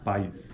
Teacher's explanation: os segmentos vocálicos a e i ocorrem na mesma sílaba e há uma mudança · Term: ditongo